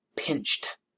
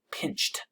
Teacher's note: Notice that the ed at the end sounds much like a T. Pinched. It doesn't sound like a soft D sound.